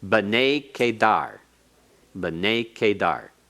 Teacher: It's still pronounced as one word, but it has secondary accent